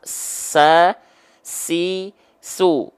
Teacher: huruf Sin punya sifat hams tapi kadarnya mengalir